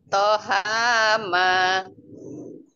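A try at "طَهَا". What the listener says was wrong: Ha, huruf H. Ini huruf H, bukan ma ya.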